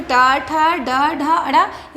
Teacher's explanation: ट ठ ड ढ अड़ इसका उच्चारण स्थान मूर्धा है।